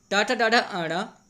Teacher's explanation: टा वर्ग टाठा डाढ़ा आड़ा, यह जो होता है जीभ जो होती है हमारी, वो मूर्धन्य से जाके टकराती है। मूर्धन्य जो होता है दांत के नीचे वाला हिस्सा होता है।